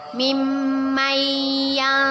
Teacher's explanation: Nun sukun bertemu dengan huruf ya. Bacaan nun sukunnya kita masukkan kepada huruf ya dengan berdengung dan ditahan 2 harokat. Mimmayya. Hukum bacaannya ialah idgham bi gunnah.